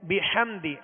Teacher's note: ہا اس کو بھی درمیانے حلق سے واضح ادا کریں گے. بحمدی اس میں سکون ہے, جزم ہے, تو یہ آواز ہلنے نہ پائے, اس میں جنبش پیدا نہ ہو.